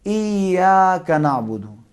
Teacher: ایا تھوڑا کھینچنا پڑے گا. کتنا؟ 2 زبر کے برابر, یعنی 2 زبر کے مقدار میں کھینچنا پڑے گا. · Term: الف مدہ